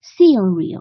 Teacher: 这个▁seal▁要读重一些，因为它重音在第一个音节这里